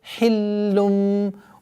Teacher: Сперва удвоение, потом огласовка дамма, а потом уходим мы в насализацию в размере 2 огласовок.